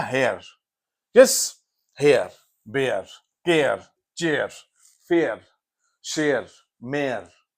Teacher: एया, ए आ, एया, पहले साउंड ए है फिर आ है, तो एया।